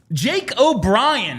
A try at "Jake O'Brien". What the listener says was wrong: Jake O'Brien. Not Jay. Jake. There's a K in there. and an E, actually.